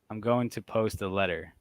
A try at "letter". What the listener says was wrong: See, letter. L-E-D-D-E-R. It isn't spelled L-E-D-D-E-R. L-E-T-T. No, but he said D. Letter.